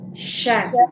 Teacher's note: Menyebar udara di dalam mulut kita ketika mengucapkan huruf shin. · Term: tafasyi